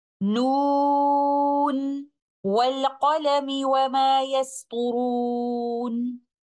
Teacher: हालांकि हमें यहाँ पर इदगाम की सूरत नजर आ रही होती है, लेकिन हफ्स के तरीके से तिलावत करते हुए हुरूफुल मुक़त्ताआत में मौजूद हरफ नून को इज़हार के तरीके के साथ ही पढ़ा जाता है